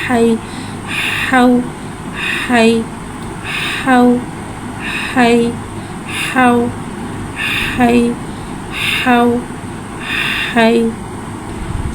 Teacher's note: हाँ में हवा को ज़ाहिर करके पढ़ेंगे। हाँ के ऊपर ज़बर है, ज़बर को मुँह खोल के अदा करके पढ़ेंगे।